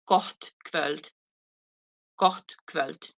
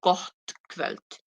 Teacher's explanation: when you have two T's, it becomes aspirated